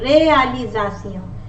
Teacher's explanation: it is pronounced as Z when it is in the middle of two vowels